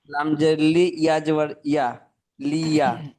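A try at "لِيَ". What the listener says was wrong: জি।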